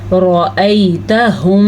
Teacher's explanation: را کو زبر کی وجہ سے پر پڑھا جائے گا۔